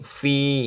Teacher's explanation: mad thobi'i panjang satu alif atau dua harakat, dua ketukan